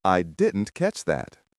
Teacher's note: The T at the end of didn't often disappears or becomes very soft.